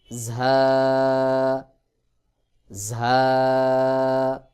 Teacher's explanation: জিহ্বার আগাটা সামনের নিচের দুই দাঁতের পেট ও আগার সঙ্গে লাগাইয়া ঝা উচ্চারণ হবে